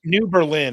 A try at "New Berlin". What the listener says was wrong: New Berlin. the accent is on a different syllable. It's Berlin. That's I don't know if that changed as a result of World War II or what, but it's New Berlin.